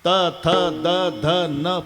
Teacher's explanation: प्रत्येक वेळेला जीभ दाताला धक्का मारते आतून